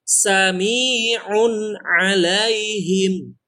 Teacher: Nah, dia tanwin bertemu dengan ain. Jadi tidak panjang, tidak dengung.